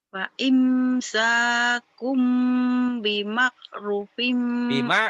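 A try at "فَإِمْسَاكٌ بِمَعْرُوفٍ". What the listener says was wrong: Jangan bimak. Jangan bimak. Jangan kekak. Bima ru-nya panjang. Bimakrufin.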